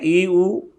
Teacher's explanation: जहाँ मुख 1/4 खुलता है वो समृत है